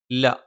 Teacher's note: നാവിന്റെ അറ്റം മേലെ മുൻബല്ലിന്റെ മോണയിലാണ്